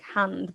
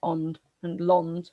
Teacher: So you get things like hand, but in Shropshire you'd get ond. Hand, you drop the H.